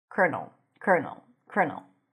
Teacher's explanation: instead of the L you pronounce an R